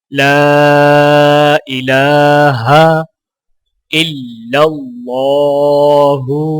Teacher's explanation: یہاں پر اللہ کے لام کو موٹا پڑھا جائے گا